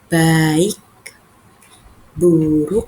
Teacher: cara pengucapan huruf B ini yaitu dengan pengucapannya dengan kedua bibir saling bersentuhan